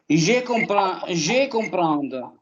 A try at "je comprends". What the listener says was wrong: On ne prononce pas le D final.